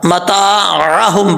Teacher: ये आइन को हमजा नहीं पढ़ना, मताअहुम पढ़ना है